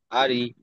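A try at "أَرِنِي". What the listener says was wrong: আরি টান হচ্ছে কেন? আরি, আরি নি।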